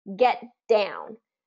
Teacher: our T comes into position, but then we don't release the T, we release the D.